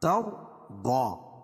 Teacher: رائے ساکنہ سے پہلے زبر ہے تو را کو پور پڑھیں گے۔ ضاد حروف مستعلیہ میں سے ہے، انہیں بھی پور پڑھیں گے۔